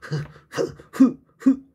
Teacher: 목구멍에서 나는 소리 히읗을 적어 보겠습니다. 이건 목구멍 사이의 마찰을 이용해요.